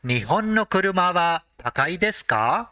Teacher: since it is a question it has to end with ka with a rising intonation